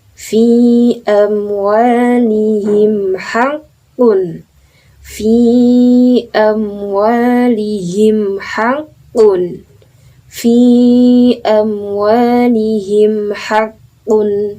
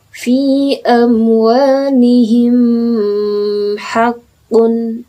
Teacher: dengan mim dibaca jelas sesuai makhrajnya, ya. Jadi mimnya tidak didengungkan, ya, tidak didengungkan, tidak ditasydidkan atau yang lain lah. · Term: idhar syafawi